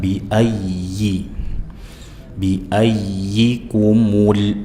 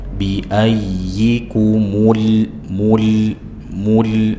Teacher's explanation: Jangan dibaca mirip ya biyai bi a ya, ya bertasydid dibaca dengan nabr penekanan, bi ada penekanan, bi kumul, mu dimonyongkan tapi lam sukunnya dibuka